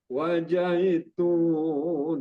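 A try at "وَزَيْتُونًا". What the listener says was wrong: Salah huruf itu bukan wajai ya tapi wazai wazai bukan wajai kalau wajai jadinya Jim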